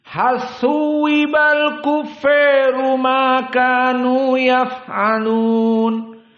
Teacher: Tentang kufar di sini al-Kisai dibaca dalam keadaan al-imalah al-kubra. Maka dibaca di sini idgham dan al-imalah al-kubra.